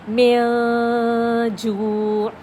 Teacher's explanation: میم کے بعد نون کو تو بھول گئی ہوں، اور جیم کے پاس جب میں کھڑی ہو گئی ہوں تو وہ کیا ہوا ہے، جیم کی ادائیگی کی وجہ سے غنہ ہمارے ناک سے خود اخفا ہو رہا ہے. غنہ کی ساؤنڈ یہی ہوتا ہے اخفا کا طریقہ.